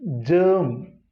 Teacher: Here one extra R is there. So this R is to be silent and it is germ.